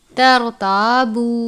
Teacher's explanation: را ساکن ہے، یعنی را کے اوپر جزم کی علامت ہے، اس لیے را کو پر پڑھیں گے